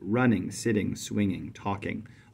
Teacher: We stress the first syllable, we don't stress the second. This takes place with verbs too, especially verbs that are one syllable that we add an ing ending to. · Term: trochaic